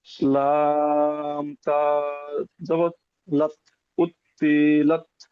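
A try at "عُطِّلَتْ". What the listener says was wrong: হ্যাঁ, উত্তি বলে টান দিচ্ছেন আপনি না, উত্তিলাত।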